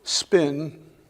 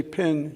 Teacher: If you put a lit match in front of your face or a candle and say spin, the candle doesn't go out. You say pin, it goes out. There's a tiny gust of air that comes with it.